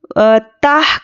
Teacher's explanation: जज़म है, तो जज़म वाले हुर्फ को क्या है, ताह करके पढ़ना है, ना कि ताहा, ताहा बोल देंगे तो इस पर हरकत लग जाएगी